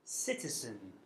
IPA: ˈsɪtəzən